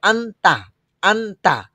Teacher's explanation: এই নুনটা ডিরেক্ট দন্তন না হয়ে অনুস্বরের মত হচ্ছে এটা এটার কারণটা কি যে গুন্নার হরফ ইয়াম নন বা আসে